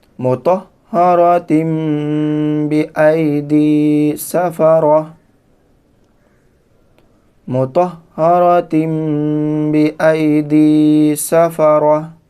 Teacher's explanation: وقف کی حالت میں یہ تا کو ہا کر دیں گے